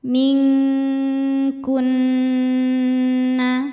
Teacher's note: Sebab ada nun sukun menghadapi huruf kaf. Cara bacanya nun dibunyikan samar menuju kaf disertai dengung. Dengungnya besar karena kaf makhrajnya jauh dari nun. Jadi sudah menyentuh makhraj huruf kaf. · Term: ikhfa hakiki